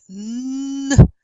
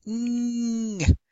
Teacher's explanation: of our tongue towards the vilem the soft palate mmm and the airstream comes out through your nose and that's why these are called nasals